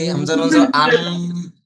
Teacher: হামজা নুন জবর আন, হামজা নুন জবর আন, নুন জবর আন, যখন আমরা ধরে রাখতেছি হামজা নুন জবর আন, আমরা কিন্তু বুঝতে পারছি নাকের মধ্যে গুনগুন একটা শব্দ আসতেছে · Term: ওয়াজিব গুন্না